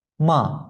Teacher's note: toʻrtinchi ton. Yaʼni beshinchi shkalidan birinchi shkalaga tushadi. Shuning uchun 51. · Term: to'rtinchi ton